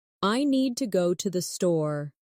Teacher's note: The stress is on need and store, while to and the are softer and faster.